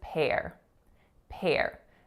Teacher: So a really aspirated P sound followed by that complex R vowel air.